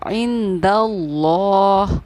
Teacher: लफ्ज़ अल्लाह के लाम से पहले ज़बर या पेश हो तो लफ्ज़ अल्लाह के लाम को पुर यानी कि मोटा यानी मुँह भर कर पढ़ते हैं, इसीलिए हमने इसको पढ़ा है इंदल्लाह।